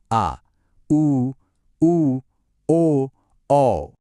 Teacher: जब जीभ बीच में एकदम रिलैक्स्ड रहती है तो बनता है मध्य स्वर, जो सिर्फ एक है, अ। और जब जीभ का पिछला हिस्सा ऊपर उठता है तो बनते हैं पश्च स्वर